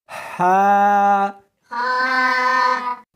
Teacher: اس کو حلق میں سے نکالنا ہے اور ساتھ میں ہوا بھی ہونی چاہیے